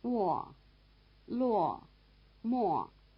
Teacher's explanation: the lip involvement of M, B, P, and F is sufficient to suggest the lip rounding of the semivowel without writing U.